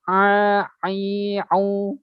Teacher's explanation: Jadi harus penekanannya lebih kuat. Ya, jadi a itu lebih dalam. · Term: huruf ain